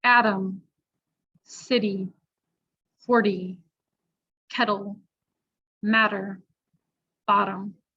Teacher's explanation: The flap T, becomes a D sound, and we use that between 2 vowels, 2 voiced vowel sounds, or a vowel and a voiced consonant, the R, L, or M sound.